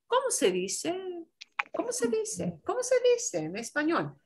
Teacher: in Spanish, when you ask a question, often we have our voice trail up at the end, like we do in English.